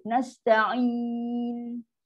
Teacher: Kat mana makhraj nun? Bukan hujung lidah betul-betul. Tekan pada langit lembut. Nasta'in. Kat situ lah lidah kita akan stop landing terakhir. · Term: nun sukun